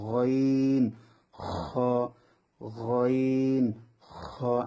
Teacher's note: আমরা যখন গড়গড়া করি গইন গ, ওইভাবে উচ্চারণ হবে এই অক্ষরটা